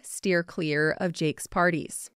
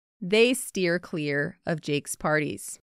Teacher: notice how you can barely hear of in there